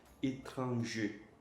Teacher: Tá vendo que o R aqui eu não pronunciei.